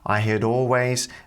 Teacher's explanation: You can't really hear the A in had, so it's just had.